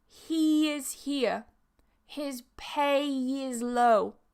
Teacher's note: your first vowel is going to be a smiley E vowel, meaning your mouth is E, your mouth is in this shape. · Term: linking with y